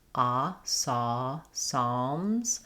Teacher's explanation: the L is silent, but it affects how we say the A vowel. It's a little bit more dark.